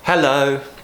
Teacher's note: And what we want to do is to show that we're a friendly person by doing this mixture of a rising, falling tone